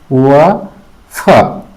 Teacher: दंतोष् दांत और ओष्ठ दोनों की सहायता से उच्चारित होता है। व फ ऊपर के दांत और नीचे के ओठ से इन सब का उच्चारण होता है